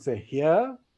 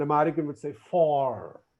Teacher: British would say for, r silent, for, and American would say for.